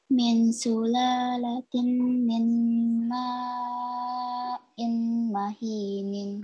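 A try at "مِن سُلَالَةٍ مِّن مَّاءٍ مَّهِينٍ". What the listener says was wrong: Masih kedengaran suara tanwinnya, sayang ya. Jadi, min sulalatim. Langsung, sulalatim. Ah, mahin. Jadi bunyi nunnya hilang ya. Sulalatinnya hilang. Beda, lihat lihat mulut Pak Afif. Sulalatin itu bunyi N, tanwin. Tapi ini langsung ke sulalatim mimma'in mahin.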